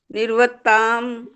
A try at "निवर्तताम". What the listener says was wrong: निर्वत क्यों बोला, ब के ऊपर र है क्या, त के ऊपर है ना, तो व के बाद बोलना निवर्तता।